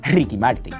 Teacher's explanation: you got that like heavily rolled r at the beginning which doesn't need to be there · If the R's at the beginning of the word, Puerto Ricans will roll the fuck out of it.